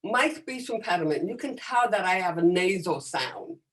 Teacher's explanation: you can tell that i have a nasal sound and that nasal sound is from having a hearing loss